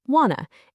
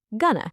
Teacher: In connected speech, want to often sounds like wanna and going to sounds like gonna.